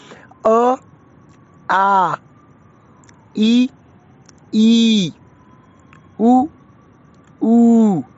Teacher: तो इसमें हम ऐसा कह सकते हैं, जो पहला अक्षर है वो ह्रस्व है, यानी कि छोटा है, उसको कम समय के लिए बोला जाता है। और जो सेकंड लेटर है या अक्षर है, उसको थोड़ा यानी कि जो पहले वाला छोटा अक्षर है उससे लंबा, यानी कि लगभग डबल सा बोला जाता है